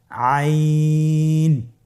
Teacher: আইন হরফটি কণ্ঠনালীর মধ্যখান থেকে উচ্চারিত হয়।